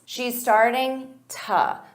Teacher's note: instead of to, you can use an unstressed t